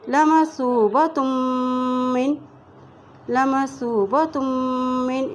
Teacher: سا کی پیش کو واو سے ملا رہے ہیں کیونکہ واو کے اوپر جزم ہے، اسی طرح تا کی تو پیش کو ہم میم کے ساتھ ملائیں گے کیونکہ میم کے اوپر شد ہے، اور جب بھی میم کے اوپر شد ہوتی ہے تو وہاں پر غنہ بھی کیا جاتا ہے۔